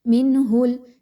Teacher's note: نون ساکن کے بعد ہا کا حرف آ گیا، یہاں پر اظہار کا قاعدہ اپلائی کیجئے اور آواز کو نون کی بڑی کلیئر پڑھیے